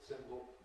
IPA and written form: ˈsɪmbl̩ (symbol)